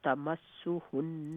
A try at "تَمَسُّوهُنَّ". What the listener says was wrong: تمسو سن کے بعد واو مدہ تمسوهن